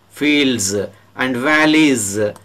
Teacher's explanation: after voiced consonant sounds, S is pronounced as z, fields and valleys, z is pronounced here because valley ends with oal sound.